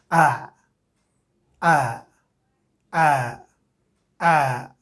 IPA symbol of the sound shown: æ